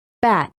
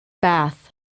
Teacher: Sound contrasts for T and the voiceless TH.